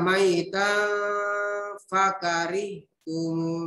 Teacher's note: Samar-samar, ya. Samar-samar kalau ikhfa itu berdengun.